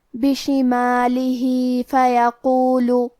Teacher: کلمت فیقول میں حرف القاف کی ادائیگی زبان کے جڑ اور تالو کے نرم حصے سے ہے. کیونکہ قاف حروف التفخیم میں سے ہے تو ہم یہ حرف کو موٹی آواز میں پڑھیں گے.